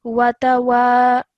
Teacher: stretch the sound out of wa for about 2 seconds